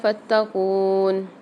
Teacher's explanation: فتقون میں قاف کے ساتھ واو مد آ رہی ہے تو یہاں پر ایک الف مدار قاف کو کھینچ کے پڑھیں گے